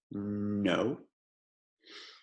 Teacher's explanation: E N, você abre as lábias um pouquinho e bota o ponto da língua na cima da boca